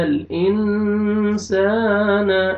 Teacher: نون ساکن کے بعد حروف اخفا میں سے سین ہے، آپ نے اخفا کرنا ہے، نوز میں ساؤنڈ لے کے جائیں گے ، الف مدہ، الف سے پہلے فتحہ، سین کو آپ نے